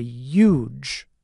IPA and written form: judʒ (huge)